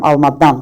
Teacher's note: Alma dan vurğu dan hecasındadır.